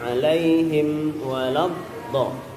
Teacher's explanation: ketika baca alaihim, mimnya tetap kita tunaikan gunnah di dalam mimnya